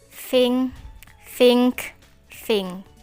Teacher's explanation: you can feel the air being forced through the teeth the tongue tip and rims are articulating with the upper teeth these sounds are called dental or interdental sounds the upper teeth